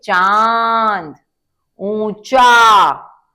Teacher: अनुनासिक शब्द होते हैं जो वह शब्द जो नाक और मुंह दोनों से बोले जाते हैं